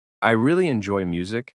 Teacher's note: the word really is emphasized to show passion